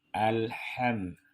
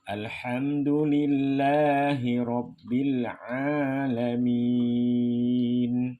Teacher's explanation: Alham, jangan jangan ada suara memantul. Alham, ha kecil tengah tenggorokan ha hihu